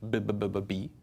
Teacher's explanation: are arranged in order of where they are in your mouth you start with B in the front with both your lips they touch